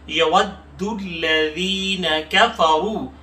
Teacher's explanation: یود میں دال ہے، تھوڑا سا روک کر سختی سے پڑھیں گے